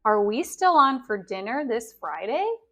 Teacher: Here we have a question. So the intonation doesn't go down. It goes up at the end.